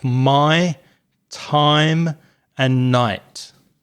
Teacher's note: if you've got the a sound and the i sound and you put those together, you get something that sounds like I, as in my, time, and night.